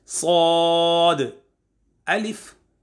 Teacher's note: जी, जो सौद है ना, ज़बान की नोक और दोनों दांतों के अंदरूनी किनारे से अदा करेंगे